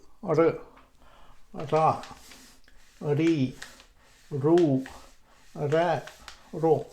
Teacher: From this position, we put the tip of the tongue like this, and we make one stroke on the hard palate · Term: sound r